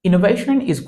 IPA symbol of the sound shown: ʃən